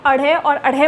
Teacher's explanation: क्योंकि एकदम से जब आप अढ़े और अढ़े बोल के देखिए तो एकदम से ऐसा लगता है फेंके हुए गए हैं, बाहर मुख से फेंके हुए गए व्यंजनों को हम इन्हें उत्क्षिप्त व्यंजन बोलते हैं